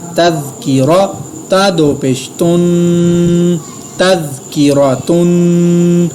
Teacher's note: تا زبر زال تز، کاف زیر کی، تز کی، را زبر را، تذکیرا، تا دو پیش تن، تذکیراتن۔ یہاں پہ میں نے را کو پر ادا کیا اور تا کے اوپر تنوین پر غنہ کیا، اخفا نہیں کیا کیونکہ آگے حروف اخفا نہیں ہے۔